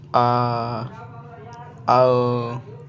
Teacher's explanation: विविध स्वर के उच्चारण में मुख द्वार पूरा खुला रहता है